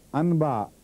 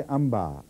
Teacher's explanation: اور اگر بے آ جائے تو نون غنہ اور میم مل جاتے ہیں